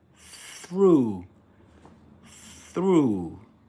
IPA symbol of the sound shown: θ